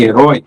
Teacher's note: A sílaba tônica em herói é o rói.